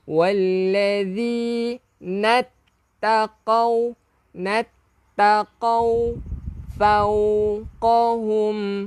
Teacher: Walladhi hujung lidah keluarkan sikit daripada gigi gunting